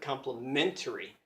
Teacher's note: the word complimentary in English is five syllables but the stress is right in the middle of the word complimentary